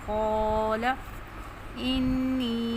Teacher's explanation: اب قاف موٹا پڑھیں گے، یہاں پہ الف بھی موٹا پڑھیں گے کیونکہ الف اپنے ما قبل کے تابع ہوتا ہے ، اگر ما قبل حرف موٹا ہے تو الف بھی موٹا